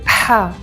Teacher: The letter ha is made here, in your larynx, your voice box. It's soft, gentle, breathy